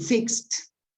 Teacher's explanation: the words ending in a sound that is pronounced only with your lips but not with your vocal cord so here there is no vibration